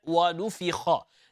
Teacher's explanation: The letter fa should remain empty mouth, okay? So make sure that because of the kha, the fa does not become full mouth.